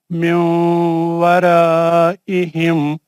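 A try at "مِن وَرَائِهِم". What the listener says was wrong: ورا را کو موٹا پڑھ. میاؤں ورائی.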